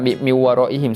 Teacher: nun mati itu kita bunyikan kita masuk terus pada huruf wow